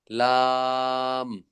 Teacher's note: জিহ্বার আগার কিনারা সামনের উপরের দাঁতের মাড়ির সঙ্গে লাগাইয়া